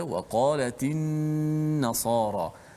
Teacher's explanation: Pada وقالت النصارى kena panjangkan gunnah dan jelaskan gunnah itu.